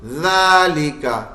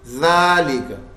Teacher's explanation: ذالکا یہ تھا, ذالک, اور بن کیا گیا ذالک. کاف کا زبر والا حرف وقف کرنے میں ساکن ہو گیا